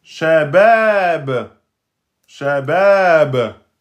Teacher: Comme il y a un point d'exclamation, eh bien, on va s'arrêter, hein. Et si on s'arrête, on remplace la damma par soukoun. Et donc, ça va devenir shabab, ba, soukoun, qalqala.